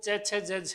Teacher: इनका उच्चारण स्थान कहाँ से है, तालु से, इसलिए तालव्य है